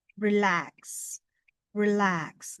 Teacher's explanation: Nah, biasanya ini stres dalam pengucapannya itu ada di belakang. Relax. Relax. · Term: lambic pattern